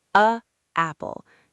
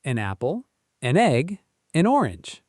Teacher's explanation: when you add that little n sound, it creates a bridge. The words slide together effortlessly.